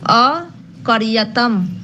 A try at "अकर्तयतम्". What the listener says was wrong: अकर्य अकर्तयतम, कर्त है। हाँ, अकर्तयः अकर्तयतम।